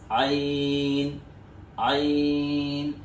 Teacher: जैसे कि हा अदा किया था गले से वैसे ही ऐन को भी अदा करना है। ऐन ऐन फिर गन गन की आवाज भी मुंह भर के पढ़ी जाएगी।